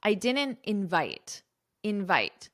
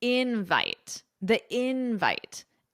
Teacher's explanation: So with verbs, the syllable stress is on the second syllable, invite. But with nouns, the syllable stress is on the first syllable, invite.